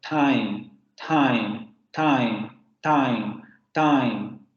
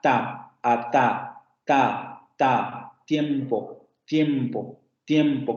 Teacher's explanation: Alveolar oclusivo sordo, pero aquí ya tenemos que recordar lo que habíamos visto con la presentación del inglés. En inglés, efectivamente, esta consonante va a ser una alveolar oclusiva sorda, pero en francés como en español, este fonema va a ser una dental oclusiva sorda.